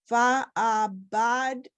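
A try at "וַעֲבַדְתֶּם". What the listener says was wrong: Okay, just notice that there's no dot, so it's va. Va'ava. The tem. Va'avadtem.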